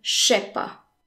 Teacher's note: As we saw previously, je is often pronounced sh. So far we've seen that je often becomes sh in speech, and the ne of the negation is usually omitted altogether.